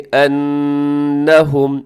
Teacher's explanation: نون کے اوپر شد ہے، یہاں پہ غنہ کیجیے گا